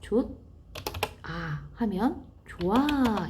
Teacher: 히읗이 소리가 나지 않습니다. 만약에 히읗이 소리가 난다면 좋아 이렇게 발음이 돼야 되겠죠.